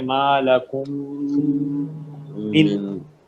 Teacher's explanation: میم ساکن کے بعد میم ہے ادغام ہوگا غنہ کریں گے